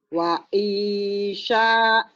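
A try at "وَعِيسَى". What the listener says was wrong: Sin kecil. Wa isa. Wa isa.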